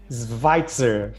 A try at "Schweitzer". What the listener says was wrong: Olha, foi quase, viu? Foi quase. É que não é um V, é quase um U, então é Schweitzer.